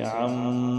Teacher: اب میم پر شد ہے تو اس پر ہم گنہ کریں گے۔ یہ نون اور میم مشدد کا واجبی گنہ ہوتا ہے۔